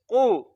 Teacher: قاف ہم نے دیکھا حروف مستعلیہ میں ہے تو اس کو موٹا پڑھیں گے. قاف پیش قو.